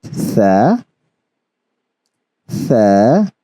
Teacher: these letters you have to make sure that the sound is there's no whistling sound in it there's no sharpness in the pronunciation it's very soft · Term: softly pronounced letters